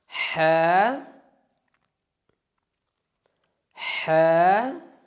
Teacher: وسط خلق سے ہا ادا ہوتا ہے، یعنی کہ خلق کے درمیانی حصے سے ہا ادا ہوتا ہے.